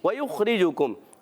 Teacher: واو کی ادائیگی ہونٹوں کی گولائی سے، وَيُخْرِجُ، خا کی ادائیگی حلق کے اوپر والے حصے سے، حرف ہلکی میں سے، حرف مستعلیہ میں سے بھی، موٹا بھی رکھنا ہے، کلکلا نہیں کرنا۔